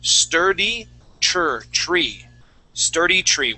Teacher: with this uh this TR sound we want to pronounce a CH sound